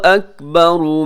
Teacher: اکبروں میں را موٹا پڑا جائے گا